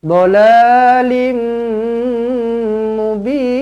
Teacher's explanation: Tanwin bertemu dengan mim sabdu, jumpa dengan mim sabdu, terus rapatkan bibir, dengungkan dua harakat. Idgham ma'al gunnah.